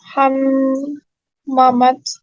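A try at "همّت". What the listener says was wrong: hammat. Hammat, tetap mimnya bertasdid. Hammat, enggak hamamat, enggak gitu.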